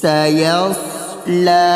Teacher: صاد کی سیٹی مارنی ہے موٹی کر کے